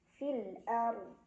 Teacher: Ra sukun dibaca secara tafkhim karena ra sukun didahului huruf yang berbaris fathah ya. Jadi ra-nya tebal. Fil ard. Nah, kemudian hati-hati huruf dodnya juga harus tetap ada ya, terbaca walaupun tidak jelas ya.